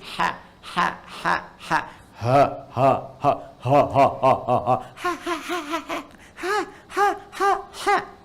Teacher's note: saat kita mengucapkan ha itu kurang lebih 75% udara kita keluar sehingga nafas biasanya cepat berkurang.